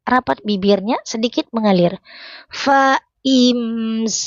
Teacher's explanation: Mim sukun bertemu dengan sin. Dibaca terang jelas mim sukunnya ya. Rapat bibirnya sedikit mengalir.